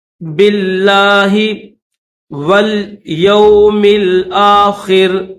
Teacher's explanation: با کو لفظ اللہ کے ساتھ ملائیں گے اور لفظ اللہ کو باریک کر کے پڑھیں گے ، باللہ والیوم الآخر، واو کو لام کے ساتھ ملائیں گے،